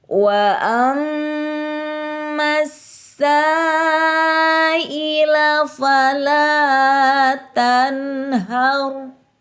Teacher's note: Karena alif lam menghadapi huruf syamsiah atau huruf lamnya tidak dibaca tetapi dimasukkan ke dalam, dimasukkan. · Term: alif lam syamsiah